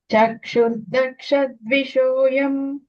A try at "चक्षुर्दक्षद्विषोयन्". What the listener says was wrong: எம் இல்ல என்ன.